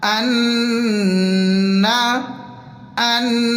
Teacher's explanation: یا ہا زبر یح، یحسب، یحسب. ان، حمزہ کو نون سے جوائن کریں گے تشدید کی وجہ سے اور یہاں پر غنہ بھی کریں گے